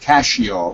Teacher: the SC sound in Italian is a sh sound. So that's.